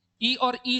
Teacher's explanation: ई और ई जो होते हैं तालू के अंतर्गत आते हैं